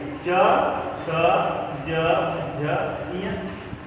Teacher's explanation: ये जितने भी व्यंजन हैं ये किससे बोले जाएंगे, तालु से बोले जाएंगे। च यानी दांत के ऊपर जो है आपकी जीभ जो है देखो चिपक गया च, और फिर तुरंत जो है वापस आ रहे च, है ना, दांत ऊपर थोड़ा जाओ च, जो थोड़ा सा हल्का सा वो उठा हुआ है च, है ना।